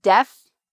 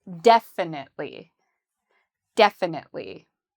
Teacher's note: this adverb has the stress on the first syllable